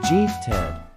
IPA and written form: ˈɡɪf.tɪd (gifted)